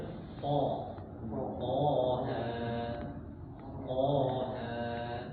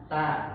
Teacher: Jadi dia ujung lidah ini nempel di gusi atas. Nah, tapi dia pangkal lidahnya diangkat jadi tebel. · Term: tebal